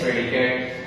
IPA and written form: ˈprɛdɪkət (predicate)